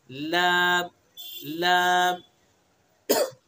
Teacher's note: जबान का किनारा एक जाहिक से लेकर दूसरे जाहिक तक और ऊपर के दांतों के मसूड़े